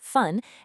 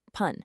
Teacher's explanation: it actually oscillates in pronunciation between a softer fun and a much punchier pun. And the version you use is entirely dependent on the sound of the number that comes right before it.